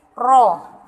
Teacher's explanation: Rabbana harus dibaca tebal, bukan rob tapi ro. Rabbana tebal.